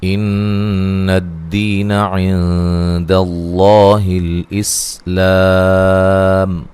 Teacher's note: نون مشدد پہ غنہ ضروری ہے، دی یا مدہ ہے، عین نون ساکن کا یہاں اخفا ہے، داللہ لفظ اللہ کو موٹا ادا کرنا، اس سے پہلے حرف پر زبر ہے، الاسلام لام کو ہلانا نہیں ہے۔